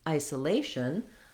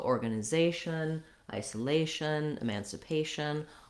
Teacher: There is secondary stress on our first syllable I.